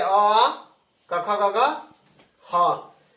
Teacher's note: कंठ से बोले जाने वाले वर्णों को कंठ्य वर्ण कहते हैं